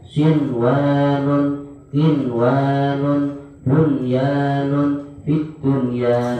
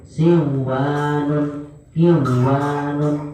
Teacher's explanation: nun sukun yang bertemu dengan huruf wawu dan ya dalam satu kalimat itu dibaca idah wajib, panjangnya satu ketukan.